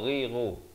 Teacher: ghain di hujung kerongkong